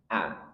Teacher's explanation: Hamzah keluar dari pangkal tenggorokan di bawah jakun. Ini ada pita sekitar pita suara. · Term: huruf hamzah